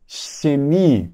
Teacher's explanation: eu coloquei o dente aqui atrás dos dentes perceba que eu coloquei aqui a língua atrás dos dentes inferiores e ficou xemi bem chiadinho